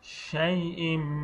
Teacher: তানবিনের পরে ইকলাবের হরফ বা আসছে, জন্য তানবিনকে মিম দ্বারা পরিবর্তন পড়তে হবে